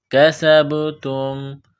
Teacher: سین میں سیٹی کی آواز پیدا کرنی ہے، با کے ساتھ ملانا ہے، با ساکن ہے، قلقلہ کریں گے